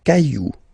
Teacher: remember, you don't pronounce it, the final X.